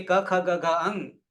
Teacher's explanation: આ પાંચ વ્યંજન કંઠ માંથી નીકળે છે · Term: ક વર્ગ